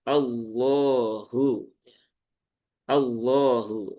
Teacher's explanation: Taulid itu ya sama dengan tafkhim, tebal. Nah, sehingga caranya pun juga sama, yaitu dengan diangkat pangkal lidahnya.